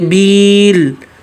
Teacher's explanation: یا ایک الف مد کے برابر کھینچنا ہے اور لام کو ساکن کو واضح کرنا ہے